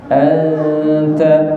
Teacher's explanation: Ikhfa hakiki dia samar-samar. Ketika kita mendengung, lidah kita sudah bersiap-siap buat membaca ta.